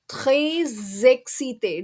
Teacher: So whenever the first word ends in x, s or z and the second word starts with a vowel which are a, e, I, o, u, we make the z sound. That's a liaison which is formed, and because of that we make the z sound.